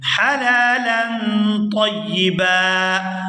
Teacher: یہاں پر وقف کریں گے تو وقف کی صورت میں با پر ایک زبر ادا کی جائے گی